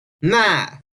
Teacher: Hear the glottal stop? It's just like in the phrase uh-oh in English.